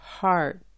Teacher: las vocales E A se pronuncian como la A del español, seguida por la R de inglés.